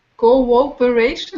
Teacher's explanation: The W comes between the two O's.